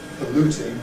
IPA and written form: pəˈluːtɪŋ (polluting)